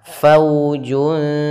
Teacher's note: Kemudian pada lafal fau di sini ada waw sukun didahului fathah, maka di sini kita namakan dengan bacaan lin, bacaan yang lembut, fau. Maka untuk menyempurnakan makhraj daripada huruf waw dan sifatnya, yaitu kita monyongkan bibir kita ke depan